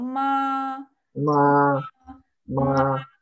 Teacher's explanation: Первый тон ровный и высокий. Ма, на ровной линии говорим, поем.